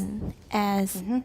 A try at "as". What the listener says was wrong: Us is not wrong, but you've all learned us as the normal pronunciation for as. The citation pronunciation is as with a Z.